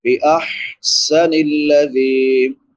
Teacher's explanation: چھوٹی حا ہے، حلق کے درمیان سے ادا ہوتی ہے